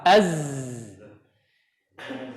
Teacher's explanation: huruf zai itu mengalir. ya, karena dia punya aliran suara.